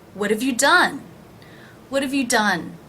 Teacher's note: you done notice that the H is dropped in half and the vowel is actually reduced from a to the schwa of both that is how we're pronouncing the word have in